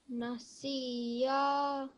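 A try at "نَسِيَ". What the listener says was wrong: Make the short sounds really succinct and very clear. We need to make sure that when we're saying it, we don't sound like we're joining the seen to the ya. It's not siya. It's just si and then ya.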